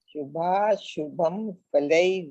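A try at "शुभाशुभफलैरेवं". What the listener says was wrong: शुभम, आप ये तो गलत कर रहा है. शुभा शुभ, उसमें शुभम नहीं है. शुभा शुभ.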